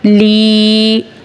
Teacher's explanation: یا ساکن سے پہلے زیر ہے یا مدہ ہوگا ایک الف کھینچ کے پڑھیں گے